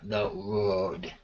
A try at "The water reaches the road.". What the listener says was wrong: Okay, the road, I'm still hearing a little bit of a W. The road.